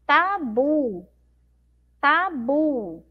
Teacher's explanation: Ó, a sílaba bu é a sílaba mais forte. Demoramos mais um pouquinho, ó.